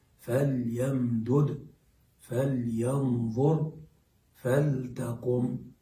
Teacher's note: تلاحظ أنني ألفظ باللام مظهرة ساكنة مظهرة